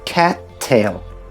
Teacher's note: So what you do instead, is add a glottal stop after “ca-”, and wait for a fraction of a second before you pronounce “tail”. So it's not “cat”, but “ca-”, pause “tail”.